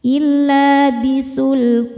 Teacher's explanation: Huruf yang disukunkannya nun. Maka thnya panjang boleh dua boleh empat atau enam harakat asal konsisten dalam sekali baca. · Mad tobi'inya fathah panjang pada huruf to, huruf yang disukunkannya nun. Maka to-nya panjang, boleh 2, boleh 4 atau 6 harokat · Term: mad arid lukun, mad arid li sukun